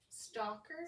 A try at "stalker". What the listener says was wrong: You said soccer at first, so I was like, is he a soccer coach?